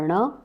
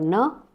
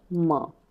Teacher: हर एक वर्ग का लास्ट व्यंजन हम लोग इसको बोलते हैं अनुनासिक व्यंजन, क्योंकि इसका उच्चारण हम लोग नाक और मुंह दोनों से करते हैं, इसलिए इसको बोला जाता है अनुनासिक व्यंजन।